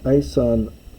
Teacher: Homer's shortened the vowel here, probably for the sake of meter.